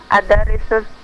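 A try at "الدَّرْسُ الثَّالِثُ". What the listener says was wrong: Ad-Darsus. Ad-Dar, ra-nya disukun. Ad-Darsu. Ad-Darasus Tsalitsu.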